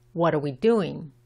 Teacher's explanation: Aquí la R y la W se mezclan.